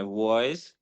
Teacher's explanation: that Russian V is softer than the English V